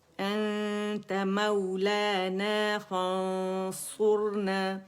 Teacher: اخفا موٹا ہوگا کیونکہ صاد ہے نا، حرف اخفا صاد موٹا ہے